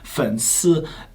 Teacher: So, different tone, third tone.